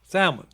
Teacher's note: So it is salmon. The L is silent. Yeah, no L.